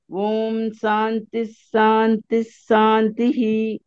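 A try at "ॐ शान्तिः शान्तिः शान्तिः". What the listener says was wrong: ఆ మీకు దంత సకారం కలుగుతుంది సకారం ప్రయత్నం కొంచెం ప్రయత్నం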